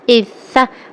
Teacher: سا میں جو ہے سیٹی کی آواز بالکل نہ آئے